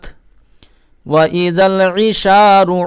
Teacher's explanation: আইন গলার মধ্যখান থেকে বের করবেন, ত্বকে পুর করে পড়বেন, উত্তিলাত।